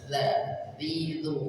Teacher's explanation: Hati-hati huruf dzal keluar dari ujung lidah bertemu dengan ujung gigi dari atas.